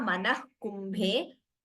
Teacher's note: That is Visarga followed by Ka, Jihva Muliya